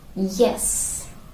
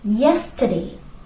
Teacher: It's not the vowel sound It's the consonant semi-vowel sound y.